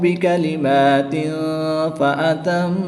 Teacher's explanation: تنوین کے بعد حرف اخفا میں سے فا ہے تو یہاں پر اخفا ہوگا، یعنی غنہ زمانی کریں گے۔ میم مشدد میں اور نون مشدد میں ہمیشہ غنہ ہوتا ہے، یہاں پر بھی غنہ کر کے پڑھیں گے۔